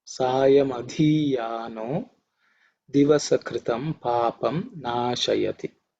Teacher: This dhi is an aspirated one, 4th letter in the Thavarga.